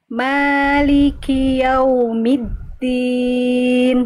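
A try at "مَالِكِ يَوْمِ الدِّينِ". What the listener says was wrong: Oke, middin dal itu dia ketika tasydid dia agak tergelincir bunyinya. Maliki yaumiddin. Jangan sampai putus banget. Maliki yaumiddin. Maliki yaumiddin. Agak tergelincir bunyinya.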